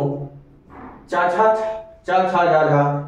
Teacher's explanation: चा छा जा झा यह तालव्य के द्वारा बोला जाता है मुख में